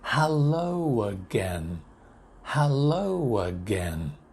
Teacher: continue the sound don't stop the sound hello again hello again now there is an extra sound in between the two vowel sounds so that it's easy to join the two vowel sounds together